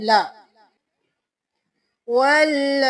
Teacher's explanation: چونکہ اس کے اوپر کھڑی زبر بھی ہے مد بھی ہے، اس لیے ہم اس کو اچھی طرح کھینچ کے پڑھیں گے۔ پہلے واو کے ساتھ لام پڑھا ول اور پھر لا، واللہ۔